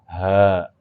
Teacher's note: Jadi yang tadi huruf halak yang pertama nih, yang katanya huruf tenggorokan, itu dibagi 3 tempat. Yang pertama, tenggorokan paling bawah, aqsa. Tenggorokan bagian bawah nih, ya dada berarti mendekati dada.